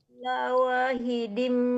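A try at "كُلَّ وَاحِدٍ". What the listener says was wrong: Nah, itu la nya kepanjangan. Kulla wahidin, la nya dipendekkan.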